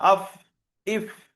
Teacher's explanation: ফা উচ্চারণ হয় নিচের ঠোঁটের ভিজে অংশ এবং সামনের উপরের দুই দাঁতের আগার সাথে লাগিয়ে উচ্চারিত হয়